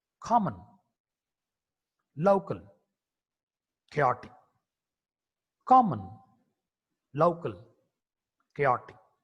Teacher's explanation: K is a voiceless velar plosive consonant.